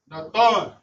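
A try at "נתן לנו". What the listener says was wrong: Nathan Lanaw. Say the Lanaw too.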